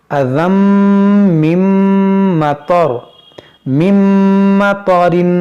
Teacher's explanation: تنوین کے بعد میم ہے تو یہاں پر ادغام کریں گے